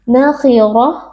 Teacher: karena kita waqf pada Ta marbutah Maka ta marbutah kita ganti menjadi Bunyi ha sukun